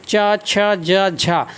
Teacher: तो हमारी हवा थोड़ी घर्षण करके निकलती हमारे मुंह से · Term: संघर्ष व्यंजन